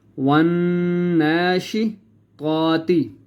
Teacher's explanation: یہاں پہ اس لیے ہم نے واو کو نون کے ساتھ جب ملائیں گے تو غنہ کریں گے